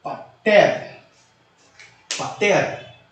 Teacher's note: O epsilon se alonga para eta. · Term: alongamento do epsilon